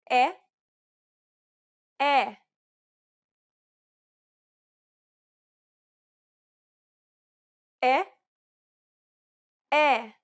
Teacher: this vowel sound is identical to the e in set it's known as the open e sound in Portuguese